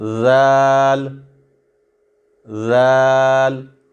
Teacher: جس طرح ثا کو ہم نرمی سے ادا کرتے ہیں اسی طرح ذال کو ہم نرمی سے ادا کریں گے۔ زبان کی نوک سامنے والے جو اوپر والے دانت ہیں ان کو جا کے ٹکراتی ہے۔